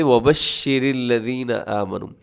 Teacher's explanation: شین کے اندر ایک صفت پائی جاتی ہے جسے کہا جاتا ہے تفشی، اور اس کا مطلب یہ ہے کہ جب شین کو آپ ادا کریں گے تو آپ کی آواز پھیل جائے گی، آپ نے آواز کو روکنا نہیں ہے